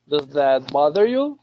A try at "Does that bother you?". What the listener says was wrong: Good. One more time.